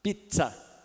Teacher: a junção de dois sons falados de uma só vez é um africado